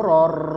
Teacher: Tanwin bertemu dengan huruf ro sehingga dibaca idgham bila ghunnaah. Masukkan kepada huruf ro tanwinnya tanpa menambah ghunah atau dengung.